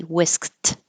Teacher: now whis by itself would sound like a t whisked because the e d sounds like a t when it follows a voiceless sound so whisk by itself has a k it's voiceless so the